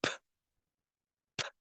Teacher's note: there is a puff of air being aspirated. It means you can feel the air coming through P. If you place your hand in front of your mouth.